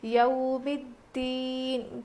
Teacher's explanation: اب یہ یو نہیں ہے بلکہ یو ہے، حروف لین ہے نا، اس لیے ہم نرم آواز کے ساتھ جلدی ادا کر کے پڑھیں گے. یو ہوتا ہے، یا واو زبر یو نہیں بلکہ یا واو زبر یو ہوتا ہے. · تشدید آنے کی وجہ سے یہ الف کو بھی نہیں پڑھیں گے، لام کو بھی نہیں پڑھیں گے